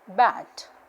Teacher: If I have a look at the sound B, it is voiced bilabial plosive